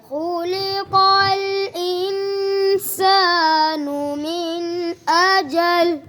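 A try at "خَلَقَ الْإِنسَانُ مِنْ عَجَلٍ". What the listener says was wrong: غنہ آپ نے توڑا کیا. دوبارہ پڑھو.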